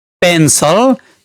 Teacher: पेन्सल दुई वटा सेलबल भएको वर्ड हो। पहिलो सिल्भल पेनमा तुलनात्मक रुपमा बढी बल पर्छ मतलब यहाँ पहिलो सिलबलमा स्ट्रेस पर्छ।